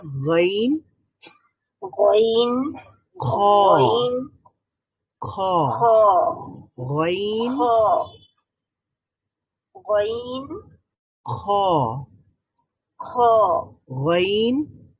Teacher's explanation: গাইন আর খ উচ্চারণ করার সময় এটা একেবারে হলকের শেষ ভাগ থেকে উচ্চারণ করতে হয়, একেবারে উপরি ভাগ থেকে।